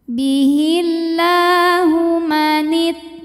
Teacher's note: lam berbaris fathah panjang maka lam ini kita panjangkan dua harakat saja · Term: Mad Thobi'i muqaddar